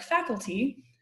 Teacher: that penultimate syllable, kul, is definitely light. It only has a consonant and a vowel in it. Doesn't have a long vowel, doesn't have a coda.